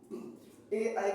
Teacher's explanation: ए ए का उच्चारण स्थान कंठ तालव्य पे होता है